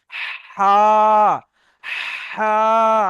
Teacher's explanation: তো হা বলার সময় এই কণ্ঠনালীর মাঝখান হতে হা উচ্চারিত হবে।